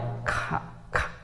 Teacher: এটা কণ্ঠস্বর থেকে আসে, কিন্তু কণ্ঠস্বরের ব্যবহার হয় না, শুধু কণ্ঠের বাতাসের ব্যবহারটা হয়।